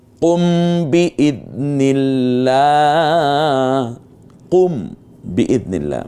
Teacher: মিম সাকিনের পরে বা এসেছে, জন্য আমরা গুন্না পড়েছি।